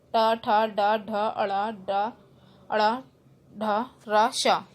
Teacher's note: मूर्धन्य मीन्स आपके मुख की छत से जो बोले जाते हैं कठोर तालु के अगले भाग से